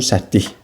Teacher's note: Kar samitlə başlayıb, kar samitlə bitir.